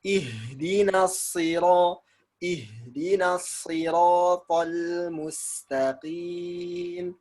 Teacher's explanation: Sod ini hampir sama dengan sin. Makhrajnya sama. Cuman lidah yang sod itu dia naik, lidah belakangnya. Nah, jadilah huruf sod.